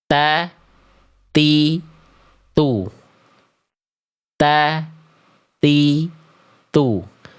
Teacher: Melafalkan huruf ta dengan menjulurkan ujung lidah ke keluar mulut.